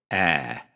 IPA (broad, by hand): æ